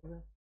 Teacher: Согласный, звонкий парный, твердый парный.